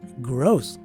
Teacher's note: always indicates a stretched out letter which means to say that the letter o here is a long o and not a short o as most of us are pronouncing this word